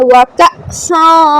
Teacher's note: حمزہ ساکن آ گیا، جھٹکا دیں گے